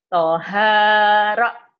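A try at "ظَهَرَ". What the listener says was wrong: Toha Zo, bukan to ya, Zo Zohara, kemudian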